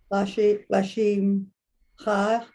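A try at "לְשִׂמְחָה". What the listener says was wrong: L'simcha. It's a sin. The dot is on the left.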